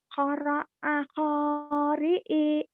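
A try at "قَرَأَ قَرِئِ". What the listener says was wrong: Nggak ada yang panjang. Qoro'a qori'i.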